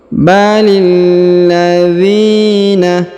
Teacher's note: huruf dzi dipanjangkan dua harakat karena di depannya terdapat Ya Sukun